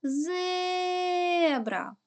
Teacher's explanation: який звук ми тягнемо найдовше звук е Він стоїть в першому складі тому склад зе перший склад наголошений тепер робимо звуковий аналіз звук